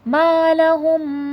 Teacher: ما میں الف مدہ کا قاعدہ ہے تھوڑا کھینچ کے پڑھا جائے گا ، الف سے پہلے زبر ہے، بیہ من علم، میم واو